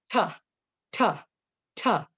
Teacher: The first letter T is a stop, disrupts airflow, quick, sharp staccato.